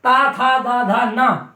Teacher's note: ता वर्ग का उच्चारण अपन दांतों के सहयोग के बिना नहीं कर सकते, इसलिए ता था दा धा ना ये दंत वर्ण है।